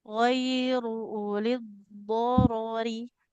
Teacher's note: jadi tidak ada ro-nya yang dibaca panjang karena tidak ada huruf matnya.